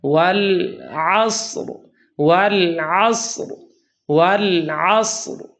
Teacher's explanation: ایک تو یہ کہ لام کے ساکن کو ہلا دیتے ہیں اور یوں پڑھتے ہیں والعصر، والعصر۔ ایک تو لام ساکن کو ہلاتے ہیں جبکہ اس میں صفت انحراف ہے، وہی ادا کرنی ہے